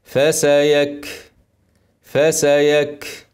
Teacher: كاف ساكنه اهمسها وبين الهمس عشان تظهر فسيكفيكهم الكف اهي ك ك يخرج فيها هوا ده فسيك فسيك